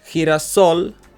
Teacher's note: so we must stress the last syllable we must stress the soul part and we do stress the